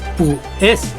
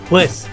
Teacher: la palabra pues, ahí hay un diptongo, por lo tanto es una sola sílaba y no es pu es, sería pues.